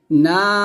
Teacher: নাতে 3 আলিফ টান দিয়ে সিনটাকে সাকিন করবে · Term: মধ্যে আরজি